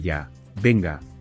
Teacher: Por ejemplo, cuando alguien tarda mucho y tú dices con un tono insistente, "Ya venga," es como decir, "Vamos o muévete de una vez." El tono ascendente y rápido hace que la frase suene más urgente.